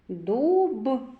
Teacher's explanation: перший звук д твердий приголосний